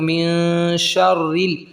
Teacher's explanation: جب را کے نیچے زیر آ جائے تو باریک ہو جاتا ہے، لیکن پہلے ہم تشدید کو ملائیں گے تو من شر ریل، را موٹا ہوگا. من شر، را موٹا ہوا، پھر باریک کریں گے.